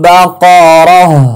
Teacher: গোলতা ওয়াকফ করিলে হা সাকিন পড়তে হবে